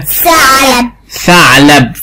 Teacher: لو نطقت من غير ما اطلع لساني هيبقى سين، لكن اطلع لساني يبقى ثاء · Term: حرف الثاء